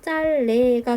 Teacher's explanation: 어쨌든 비읍을 탈락시킨 후에 짤네 하고 리을이 남게 되고 그 이후에 이제 앞에 있는 리을의 영향을 받아서 뒤에 있는 니은이 순행적으로 유음화가 되는 거죠. 그럼 최종 발음이 짤레가 되겠네요.